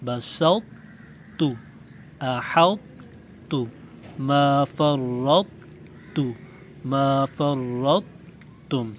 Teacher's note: ویسے تو ہم نے طا ساکن کا رول یہ پڑھا ہے کہ اس پر قلقلہ ہوگا، لیکن یہاں پر قلقلہ نہیں ہوگا، کیونکہ طا کا تا میں ادغام ہو رہا ہے، یعنی طا تا کے ساتھ مل رہی ہے، اس وجہ سے یہاں پہ قلقلہ نہیں ہوگا، بلکہ طا کو بغیر جھٹکے کے موٹی آواز کے ساتھ پڑھنے کے فوراً بعد تا کو باریک آواز سے پڑھیں گے۔ · ان 4 کلمات کے پڑھنے کا یہ طریقہ ہے کہ طا کو بغیر جھٹکے کے موٹی آواز کے ساتھ پڑھنے کے فوراً بعد تا کو باریک آواز میں پڑھیں گے۔